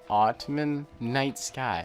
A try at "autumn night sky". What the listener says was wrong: You don't pronounce the N. It's not autumn night sky.